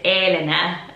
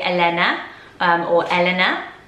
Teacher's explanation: in Italy they lengthen the A and it's Elena, which sounds so pretty, but in British we probably more say Elena or Elena.